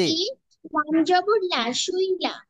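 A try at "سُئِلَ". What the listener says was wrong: সুইলা হয়ে যাচ্ছে, একটু চিকুন আওয়াজ হবে। সুইলা, সুইলা, বুঝতে পেরেছেন? সুইলা বলেন, বলেন, এবার বলেন।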